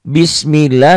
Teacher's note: lafaz Allahnya dibaca tipis. Tipis itu adalah dibaca tipis atau tarkik.